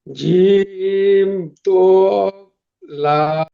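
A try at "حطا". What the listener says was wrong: লাম না, ওটা আলিফ, ঠিক আছে ভাই? জিম না, হা, ত, আলিফ। জি, জিম হলে নিচেই নোক্তা হবে, জিম হলে নিচে নোক্তা হবে, আর খ হলে উপরে নোক্তা হবে, আর খালি থাকলে যেমন এই খালি আছে এটা তাহলে হা হলো,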